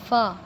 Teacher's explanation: اوپر کے دانتوں کے جو کنارے ہیں وہ نچلے ہونٹ کے تر حصے سے جب لگیں تو ادا ہوتا ہے فا۔ جب ہم فا پڑھتے ہیں نا تو ہمیں یہ فیل ہوتا ہے کہ ہمارے اوپر کے جو دانت ہیں ان کے جو اوپر والے سامنے والے جو کنارے ہیں نا، نوک جن کو کہتے ہیں، وہ جب نچلے ہونٹ کے تر حصے سے لگیں تو ادا ہوتا ہے فا۔